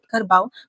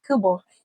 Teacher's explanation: menunjukkan berlakunya pengguguran konsonan getaran R dan perubahan di tong a menjadi vokal separa terbuka belakang. · Seperti yang anda dapat lihat dalam jadual di sebelah, perkataan kerbau dalam bahasa Melayu standard disebut kerbau, manakala dalam dialek Hulu Pahang ia menjadi kebo, menunjukkan berlakunya pengguguran konsonan getaran R dan perubahan diftong au menjadi vokal separa terbuka belakang